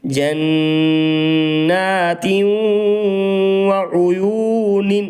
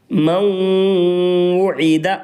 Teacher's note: کیونکہ نون ساکن کے بعد حروف ادغام کے 6 حرفوں میں سے واو آ رہی ہے، اس لیے نون ساکن میں ادغام مع الغنہ ہوگا. ادغام مع الغنہ کی آواز کو ناک میں چھپا کر پڑھیں گے، یعنی غنہ کے ساتھ پڑھیں گے.